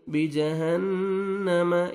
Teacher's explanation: नून मुशद्दद है, गुन्ना करेंगे